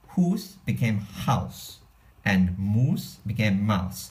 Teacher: And then also an interesting thing about this U sound, the U sound became an ow sound later on.